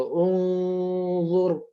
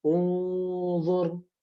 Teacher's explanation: Nah, gunnahnya dia menjadi gunnah yang tebal.